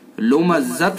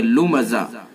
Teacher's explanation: جب اس کے اوپر وقف کریں گے، وقف کرنے کی صورت میں اس گول تا کو ہائے ساکنہ سے بدل دیں گے، لمزت نہیں پڑھیں گے بلکہ لمزہ۔